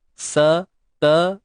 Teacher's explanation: untuk sin, ta dengan huruf jim tu satu harakat saja macam biasa. Sampai pada du ni kita kena baca dua harakat mat asli.